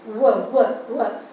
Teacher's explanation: while articulating the sound ver, ver is bilabial. Okay, the two lips are there. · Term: semi vowel